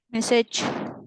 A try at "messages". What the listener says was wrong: S, ada S-nya gimana? Messages. Jadi kalau misalnya emang ada ES, ya paksain aja messages.